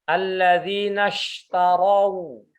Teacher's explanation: Shin ini kalau dia di sukun ya harus kuat ya, jangan seperti sin biasa tapi shin